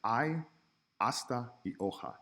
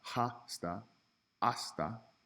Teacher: ha not hi or hey not hasta hasta and oh ha we just skip over that H as a letter in the word it just does not have any sound